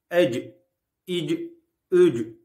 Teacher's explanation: Cim harfi dilin orta kısmının üst damağı kuvvetlice vurmasıyla çıkar.